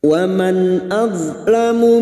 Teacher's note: Waman nun sukun bertemu hamzah idhar halki. Nun sukun dibaca jelas tanpa mendengung.